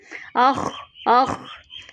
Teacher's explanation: آگے آپ دیکھیں خوا جو ہے حروف مستعلیہ میں ہے تو یہ ہمارے پاس موٹا حرف ہے تو اس کو موٹا پڑھنے کے لیے جسٹ اس میں رگڑ لے آئیں، جو وہی جو گارگلنگ کے دوران آتی ہے، جو غرارے آپ کرتے ہیں جب تب آتی ہے ایسی بات.